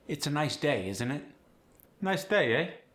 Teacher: The upward tilt keeps the accent polite, warm, and approachable.